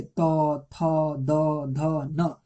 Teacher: ये तवर्ग त थ द ध, ये तवर्ग का दंत है।